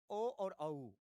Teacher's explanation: कंठ और ओष्ठ जिसको कहते हैं कंठोष्ठ, इससे होता है ओ और औ